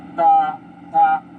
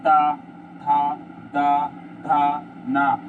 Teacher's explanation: जो हमारी जीवा है या जीव है या जो टंग है वो दांत से टच हो रही है